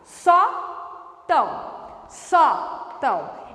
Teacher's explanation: no nariz então eu coloco tio no a para indicar nasalização mas a sílaba tônica não é o Tão é o só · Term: paroxítona